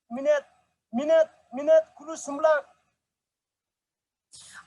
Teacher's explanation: in this example, the intrusive vowel shows up in the word maned. And so, and it's really audible, it's really long.